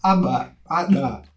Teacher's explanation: consoantes nas quais a gente coloca o ar para dentro e não para fora, como a gente está acostumado